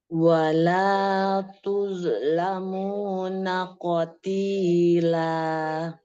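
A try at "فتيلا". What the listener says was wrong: Fatila, bukan qatila, fatila.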